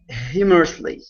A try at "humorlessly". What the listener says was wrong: This is humorlessly instead of humorous. Humorlessly. So it's going to be humorlessly. So at the very beginning, that's where our stress is. Ba-da-da-dum. Humorless.